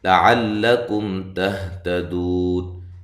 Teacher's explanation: یہاں میم ساکنہ کا اظہار ہے، ٹھیک ہے، یہاں غنہ نہیں کریں گے